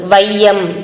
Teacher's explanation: ஐகாரம் வந்து சொல்லின் முதல்ல வரும்போது ஒன்றரை மாத்திரை அளவுல ஒலிக்கும் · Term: ஐகார குறுக்கம்